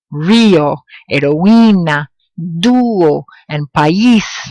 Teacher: In some words, a strong and weak vowel or two weak vowels don't merge together, but instead they form separate syllables. And in those cases, a written accent mark over the weak vowel is used to show the distinction.